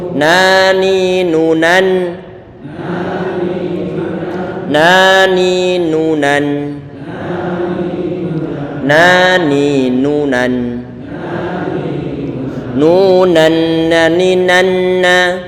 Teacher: Kita mengucapkan tanwin ataupun nun itu dibaca dengan jelas adalah dengan cara lidah kita ini, ujung lidah ditempelkan gusi bagian atas. Agak ke belakang sedikit nih. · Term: izhar